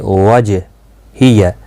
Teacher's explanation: جیم ساکن پر قلقلہ ہوگا۔ حروف قلقلہ 5 ہیں، قاف، طا، با، جیم، دال۔